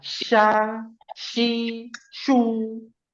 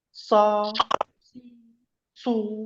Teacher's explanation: Huruf so itu dia tidak melebar mulutnya seperti huruf sha.